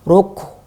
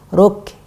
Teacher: kita harus menipiskan angin dari huruf kaf. Ya, karena kaf dia huruf tipis.